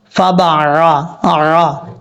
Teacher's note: یہاں با کے بعد عین ہے، عین کو آپ نے مخرج سے ادا کرنا ہے، حمزہ کی آواز نہیں آنی چاہیے